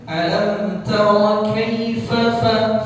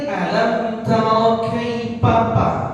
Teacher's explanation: kalau huruf fa jangan kita baca diganti jadi p